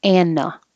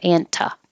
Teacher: the t is after the n and it's in the unstressed syllable